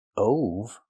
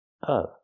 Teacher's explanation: The word of is pronounced with the short sound like cup and up. Not o like no and go.